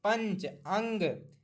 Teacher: नाक देखिए, नाक का प्रयोग हो रहा है पूरा, नाक दबा के छंद नहीं बोल पाएंगे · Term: अनुस्वार